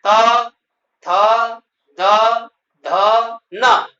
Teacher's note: त थ, द, ध न इनका उच्चारण दांत से होता है। जीभ जब दांत से टकराती है तो इन वर्णों का उच्चारण होता है। इसलिए इनको दंत वर्ण कहते हैं। · त वर्ग, इसके 5 वर्ग है, त, थ, द, ध, न, इनका उच्चारण दांत से होता है। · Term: दंत्य वर्ण